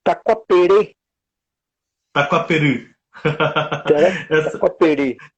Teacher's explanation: o som do Y, na verdade, ele tem um som que ele é mais falado no fundo da garganta, né, mais gutural. Então não seria, embora escreve com Y e a gente lê Taquaperi, mas na verdade a pronúncia certa é Taquaperu.